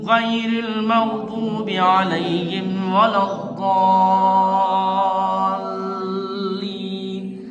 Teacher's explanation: لام کو 2 بار پڑھنا چاہیے تاکہ لگے کہ ہاں لام 2 بار ادا ہو رہا ہے۔ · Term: تشدید